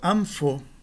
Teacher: O fi aqui é uma labial e a nasal que o antecede será também uma labial, né? Um mu. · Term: nasal labial